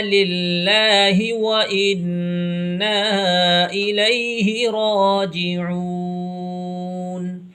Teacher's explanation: یہاں پر اللہ کا لام باریک ہوگا کیونکہ لفظ اللہ کے لام سے پہلے یہ لام ہے، اس لام کے نیچے زیر ہے